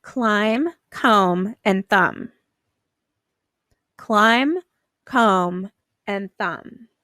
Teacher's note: you don't hear the B in these words you only hear that mm at the end